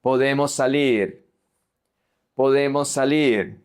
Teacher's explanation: Here we have the S and the S that are going to merge.